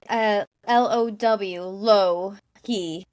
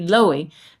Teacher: The only thing I know about Finnish is that the stress is always on the first vowel, so it has to be Louhi.